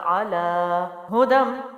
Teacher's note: ہاں جو ہے وہ سینے سے اور اس کے اوپر پیش ہے تو ظاہر ہے جلدی چھوڑیں گے